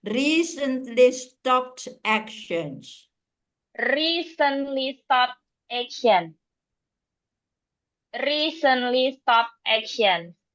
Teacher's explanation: the stress was on the first syllable